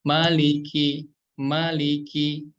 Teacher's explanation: Kemudian huruf lam itu mudahnya seperti huruf L aja ya. Maliki, ujung lidah kita nempel ke langit-langit yang atas agak depanan dikit.